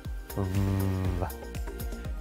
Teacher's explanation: our lip under our front teeth V you should know that this sound is a voice consonant that means you should be able to feel your vocal cords move when you make the sound